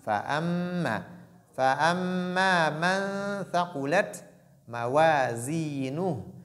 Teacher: sans oublier mim qui porte shadda, il y a aussi ce qu'on appelle la ghunna. Donc il faut nasaliser.